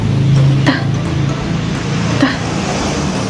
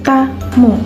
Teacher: Pertama ada cara artikulasi hambat. Bunyi dihasilkan dengan menghambat total aliran udara dan melepaskan hambatan secara tiba-tiba.